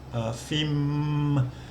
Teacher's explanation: because it ends with an M sound it's a a live syllable you you can you can carry on voicing it uh fim and the initial for fun is low class so